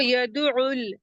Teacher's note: عین ہا وسط الحلق سے ہے، درمیانی حصے سے